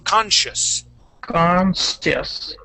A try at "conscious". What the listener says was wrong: very close. So one thing that would be good for you to work on, would be the SH sound.